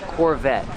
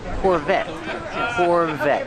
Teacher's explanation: The T is a stop T. The E is silent.